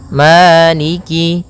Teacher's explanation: Pada bacaan maliki di lafal ma ada hukum tajwid berupa mad tabi'i, yaitu adanya fathah bertemu dengan alif, panjangnya 2 harokat, maliki. Kemudian kaf di sini ada huruf kasrahnya, maka sempurnakan kafnya, jangan seakan-akan diputus.